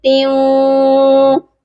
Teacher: یہاں پر آواز ناک میں جائے گی، مطلب ہم یہاں پر غنہ کریں گے۔ تا کو واو کے ساتھ ملائیں گے اور غنہ کر کے ملائیں گے۔